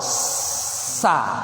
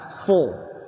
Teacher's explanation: Kalau sa, keluarkan semuanya udara. Kalau so, ada udara yang ditahan di pertengahan.